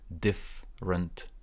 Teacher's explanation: Stress on the first part, there is no e here.